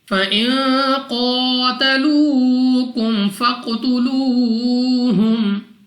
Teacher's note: واو ساکن سے پہلے پیش واو مدہ 2 سیکنڈ تک کھینچ کر پڑھیں گے. · میم ساکن کے بعد فا بغیر غنہ کے پڑھنا ہے. · نون ساکن کے بعد قاف حروف اخفاء میں سے ہے, غنہ کر کے پڑھیں گے, اور غنہ کرنے کے بعد قاف کو مستعلیہ ہے, موٹا پڑھیں گے منہ اور آواز کو کھول کر, اور 2 سیکنڈ تک لمبا بھی کرنا ہے.